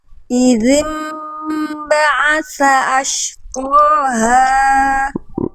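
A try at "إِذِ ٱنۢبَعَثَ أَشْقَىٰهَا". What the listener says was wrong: Idzim ba'atsa ashqaha. Nah, 3 lebih 1 harokat tadi.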